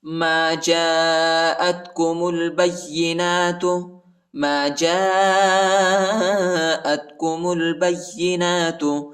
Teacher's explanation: نون پر کھڑا زبر آیا ہے، اس کو ایک الف کی مقدار تک کھینچیں گے · جیم کے بعد جو الف ہے، اس الف پر بڑا مد ہے، اس کو تقریباً 3-4 سیکنڈ تک کھینچیں گے، اور حمزہ کو تا کے ساتھ ملائیں گے، میم کو لام کے ساتھ ملائیں گے، با کو یا کے ساتھ ملائیں گے، ٹھیک ہے۔